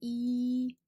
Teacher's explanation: it's e again that high front and wide sound